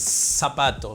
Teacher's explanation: no utilizamos la interdental, la Z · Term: ceseo